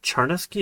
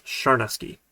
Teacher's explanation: And to my wife's chagrin, the way that you pronounce the CH in the original language in Ukrainian was actually a soft CH, like sh instead of ch. So it's not Charnesky, it's Sharnesky.